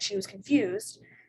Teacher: the tonic syllable would be located in the second syllable of the word confused. So it would be fused.